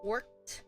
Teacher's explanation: so this ed sound sounds like a t